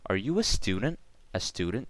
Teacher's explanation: how the end intonation changed and word stress was on student